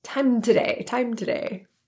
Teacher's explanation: The M in time links to today, resulting in time today, time today.